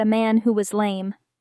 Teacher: slightly rise at the end